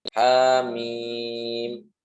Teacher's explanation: Mimnya dibaca 6 harokat ya